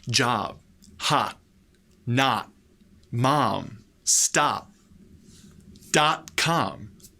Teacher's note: When we see the letter O by itself, or if it's in the stressed or emphasized syllable, the letter O in American English is pronounced ah.